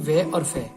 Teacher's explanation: दंतोष्ट यानी जो दांतों से बोले जाते हैं वे और फे।